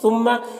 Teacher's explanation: ثم میم مشدد غنہ ہوگا